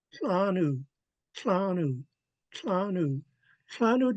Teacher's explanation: your tip of your tongue is behind your upper front teeth, and you snap that TL downwards.